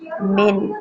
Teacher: मिन को पढ़ते हुए हम थोड़ी सी नून की आवाज़ को छुपाएंगे